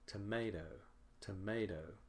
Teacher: The last syllable is shorter and softer and lower in pitch. The sound may or may not change. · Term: unstressed